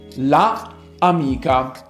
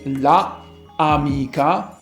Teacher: when you say la amica, it is pretty clear there are two vowels clashing together